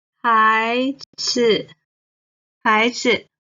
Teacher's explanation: 孩 the second tone, 子 the neutral tone.